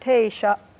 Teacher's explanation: Originally in Caddo, this was pronounced te-sha. Te, high pitch, diphthong, sha. Glottal stop on the end.